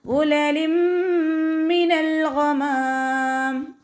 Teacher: അതിനൽ ഹൽക്കാണ് ഗൈനിൻ്റെ മഖ്റജ്, തൊണ്ടയുടെ ആദ്യ ഭാഗം. അവിടെ നിന്ന് തന്നെ സൗണ്ടിനെ കൊണ്ടുവരാൻ ശ്രദ്ധിക്കുക.